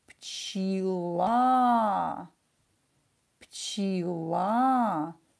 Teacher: Ударение на букву А.